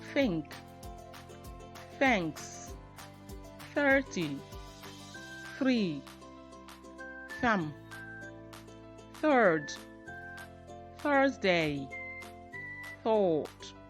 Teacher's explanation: voiceless th sounds at the beginning of a word